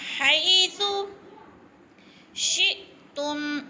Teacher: کو جھٹکا بھی نہیں دینا اور کھینچنا بھی نہیں ہے۔ حیث، سا نرم حروف میں سے ہے، نرم کر کے پڑھنا ہے، سیٹی کی آواز نہ آئے